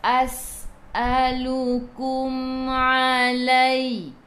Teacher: Ai'u daripada kerongkong, bukan daripada hidung. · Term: huruf ain